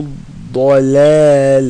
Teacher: ضاد is sides of the tongue